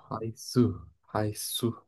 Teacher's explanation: জিহ্বার আগা সামনের উপর দুই দাঁত